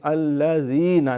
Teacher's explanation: صراط الذین، طا موٹا ہے لیکن الذین کا لام باریک ہے، یہ سیٹی نہیں مانی، الذین نرمی سے بغیر سیٹی کے